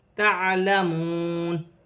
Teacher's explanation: واو ساکن سے پہلے پیش ہے تو واو مدہ بنے گی، اسے ایک الف کی مقدار کھینچ کر پڑھا جائے گا